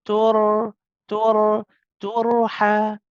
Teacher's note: the ra is also tawassut, is bayniya, so you can stay on it just for a little bit, not too long